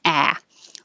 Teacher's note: the jaw is very open and the lips are back